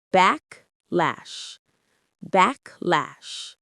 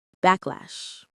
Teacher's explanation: The stress is clearly on the first syllable, backlash.